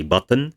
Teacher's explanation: the n is the only element in the second syllable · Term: syllabic consonant